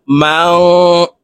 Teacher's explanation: নুন সাকিনের পরে ইকফার হরফ কাফ আসছে, এই কারণে এই নুনকে নাকের ভিতরে লুকাইয়া গুন্নার সহিত পড়ব